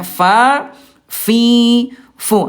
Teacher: Dari segi pangkal lidah al istifal turun pangkal lidahnya tipis